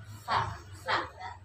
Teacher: Jadi itu mah ujung lidah dengan ujung gigi depan atas ya